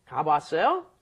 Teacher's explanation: when you put two ahs up next to each other, one, of course, disappears because you can't pronounce ah together without a consonant in between